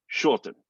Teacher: you're not really saying that r and the reason is that r comes before a t a consonant